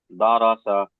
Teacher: র কে পুর করে পড়তে হয় মুখ গোল করে পড়তে